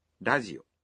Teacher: the R in radio is pronounced somewhere between an R and an L sound